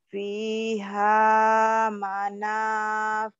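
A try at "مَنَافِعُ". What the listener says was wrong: Manafi'u, bukan manafihu. Manafi'u. Fiha manafi'u. Fiha manafi'u wa masyaribu.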